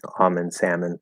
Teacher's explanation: they're starting to pronounce the l the silent l in like almond and salmon